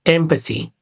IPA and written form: ˈempəθi (Empathy)